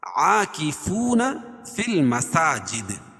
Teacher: فی المساجد دال پر قلقلہ کریں گے وقف کی صورت میں